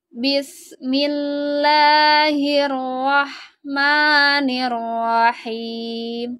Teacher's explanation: lafaz lamnya harus dibaca tipis ya karena sebelumnya ada huruf berharakat kasrah maka lafad lahnya ini jangan ditebalkan tapi tipis aja dengan bunyi